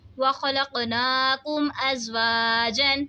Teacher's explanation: ہم نے میم میں کوئی غنہ نہیں کیا کیونکہ میم ساکن کے بعد با اور میم کے علاوہ کوئی بھی دوسرا حرف آ جائے تو وہاں پہ اظہار شفوی ہوتا ہے، یعنی ہم نے میم ساکن کی آواز کو ظاہر کر کے پڑھنا ہے.